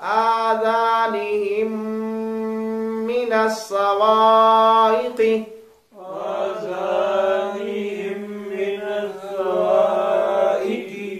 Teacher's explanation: میم ساکن کے بعد میم آ جائے تو ادغام شفوی ہوا کرتا ہے